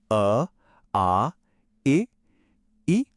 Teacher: जब अ या इ बोला जाता है तो हवा सीधे मुंह से बाहर आती है बिना किसी रुकावट के। कोई गूंज नहीं, नाक में कोई वाइब्रेशन नहीं। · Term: मौखिक स्वर